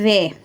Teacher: ये वे जो है दंत और ओष्ठ दोनों ही वर्णों से, दोनों ही उच्चारण स्थानों से मिलकर बोला जाता है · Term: दंतोष्ठम